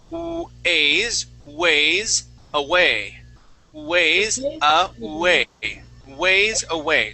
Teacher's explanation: The way that we pronounce that W is we say oo, okay? And we start off with an oo sound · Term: W sounds